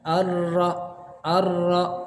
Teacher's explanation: maksimal getaran ra ini hanya 2 getaran. Arra. Getaran kedua maksimal itu harus sudah dilepaskan. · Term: bergetar